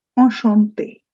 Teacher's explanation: The CH in French becomes sh.